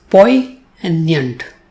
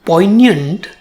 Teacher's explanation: it has two syllables Po and yant and the stress falls on the first syllable in the second syllable it has the sound year but it